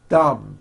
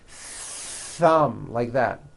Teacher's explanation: My tongue came out, but there was never any air friction. That's not good.